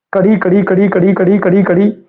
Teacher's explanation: ਤੁਸੀਂ ਦੁਬਾਰਾ ਦੁਬਾਰਾ ਬੋਲ ਕੇ ਦੇਖੋ ਔਰ ਉਸ ਨੂੰ ਮਹਿਸੂਸ ਕਰੋ, ਹਲਕੀ ਜਿਹੀ ਕੰਬਣੀ ਹੋਏਗੀ, ਕੋਈ ਐਵੇਂ ਪਤਾ ਨਹੀਂ ਲੱਗੇਗਾ ਇੰਨਾ। ਨਾਦ ਯੰਤਰ ਚੀਕਵੀਂ ਕਸਾਵਟ ਤੇ ਛਾਤੀ ਚ ਜਿਹੜੀ ਸਾਹ ਕੰਬਣੀ ਹੈ ਉਹ ਮਹਿਸੂਸ ਹੁੰਦੀ ਹੈ